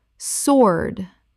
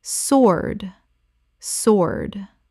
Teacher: The W is completely silent. It rhymes with Lord. Example: the sword on display in the museum is believed to be over 800 years old and is still in remarkable condition.